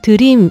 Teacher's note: 만약에 한국말처럼 드림이라고 발음을 해보면은 혀 끝에가 입천장을 좀 치는 걸 느끼실 거예요.